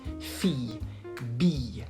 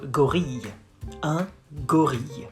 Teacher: And it's pronounced y instead of le.